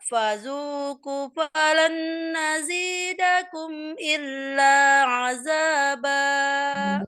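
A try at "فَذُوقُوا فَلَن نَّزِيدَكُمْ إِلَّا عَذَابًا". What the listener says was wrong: Salah lagi, kunya di situ tadi, panjang 2 harokat ya. Fazuku falan, nah tahan nunnya, ayo.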